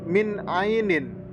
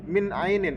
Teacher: ada nun mati bertemu dengan huruf Ain maka dibaca idhar halq dan bacanya itu harus jelas